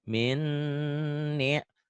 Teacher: Minnya ditahan sedikit kan guna. Idgham bi guna.